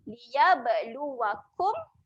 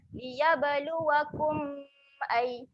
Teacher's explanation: Okey, kalau kita baca dengan dengung, liyabluwakum ai. Salah Jangan panjangkan bunyi huruf mim, dia tak ada dengung dekat sini. Sini adalah bacaan yang jelas.